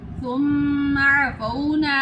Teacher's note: میم کے اوپر شد ہے، ادھر ہم غنہ کریں گے